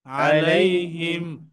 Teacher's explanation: মিম সাকিন এখানে কিন্তু নাকে আসবে না। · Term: ইজহার